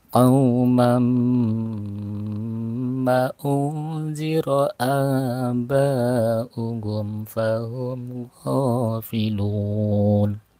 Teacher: kalau mim ini hanya dari hidung keluar keluar keluar udaranya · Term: idgham biguna